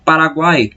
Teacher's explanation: nós temos uma semivogal, uma vogal e uma semivogal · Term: tritongo